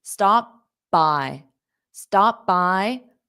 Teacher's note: Stop by. So when you close your mouth for the p, stop. And when you open it, pronounce the b.